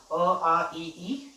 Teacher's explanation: इसका उच्चारण करते समय जो वायु होती है वो हमारे नाक से नहीं होती हुई निकलती है। ठीक है, मुख विवर से निकलती है। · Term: निर्नुनासिक